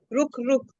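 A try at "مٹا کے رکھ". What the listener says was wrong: हाँ, मिटा, रुख नहीं है, रख। मिटा के रख। मिटा के रख।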